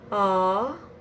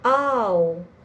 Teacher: That's why the ah is called a monophthong, which means a single sound. However, when you pronounce the ow vowel, your tongue and jaw move from one position to another. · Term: diphthong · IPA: aʊ